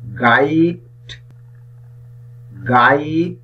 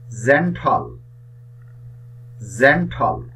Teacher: গাইড শব্দটির শুরুতে যে জি বর্ণটি আছে এটির উচ্চারণ হয়েছে গহ এর মত আবার জেন্টল শব্দটির শুরুতে যে জি আছে এটির উচ্চারণ হয়েছে জহ এর মত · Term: হার্ট জি